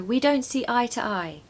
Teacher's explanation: the two is not like a sound of two, it's actually a schwa. You're going to say t, not two.